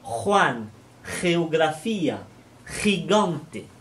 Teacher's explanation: Quant au J, GE et GI, ils se prononcent en raclant le fond de la gorge.